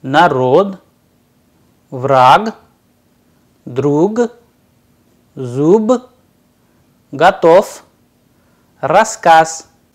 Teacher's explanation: the devoicing of the consonants